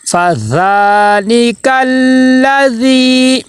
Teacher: زبان کی نوک اوپر والے 2 دانتوں کے کنارے پہ جب زبان کا کنارہ لگے گا تو ذال ادا ہوگا